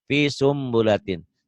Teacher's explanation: Kalau iklab bunyi N-nya jadi M, tapi bindeng M.